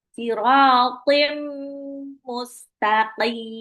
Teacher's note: Tanwin ketemu mim adalah idgham bilhunah. Tanwinnya lebur ke mim tapi ditahan dua sampai harakat. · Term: idgham bil gunnah